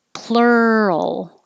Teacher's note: has the r ul combination like world and girl so plur your tongue comes back for the r and then as you're moving from the r to the l position keep making sound